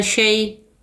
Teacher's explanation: شین یا صبر شئی، شئی میں یا لین ہے، نرمی اور جلدی کے ساتھ پڑھیں گے